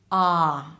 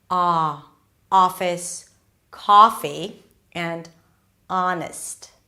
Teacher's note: my jaw is really open, the lips are not really rounded